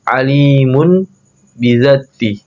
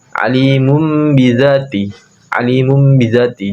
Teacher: menukar atau mengganti nun sukun atau tanwin menjadi mim mati sebelum ba disertai dengan bacaan dengung dan samar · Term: iklab